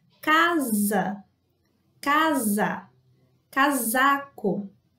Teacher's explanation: Por isso que em português nós falamos casa, casa, casaco, por exemplo. Então, o S no meio da palavra entre duas vogais vai ter o mesmo som do Z.